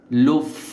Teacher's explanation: সামনের উপরের দাঁত ঠোটের উপরে নিয়ে আসতে হবে